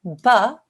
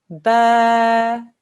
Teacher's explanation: the alif mud causes the whole sound to stretch out for 2 seconds.